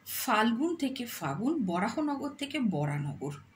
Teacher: সহজ উচ্চারণের জন্য শব্দ মধ্যস্থিত স্বর বা ব্যঞ্জনধ্বনি লোপ পেলে তাকে ধ্বনিলোপ বলা হয়